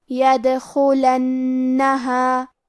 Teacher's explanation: نون پہ تشدید ہے لہذا ہمیں دو حرف کے برابر نون کو پڑھنا ہے کیونکہ تشدید کی اصلیت دو حرف ہے.